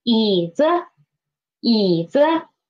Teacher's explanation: First, second, and fourth tone, then the pitch of the neutral tone will be lower, okay, lower. But when it is after the third tone, the pitch of the neutral tone will be higher